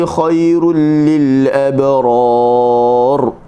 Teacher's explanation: Khairu, kha buka mulut sambil buka mulut saja. Kha, khai kita senyum, kenapa? Kerana ya lin selepasnya, ra bagi depan, ru kita muncung.